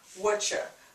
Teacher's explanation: we're just dropping the U dropping the r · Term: informal contraction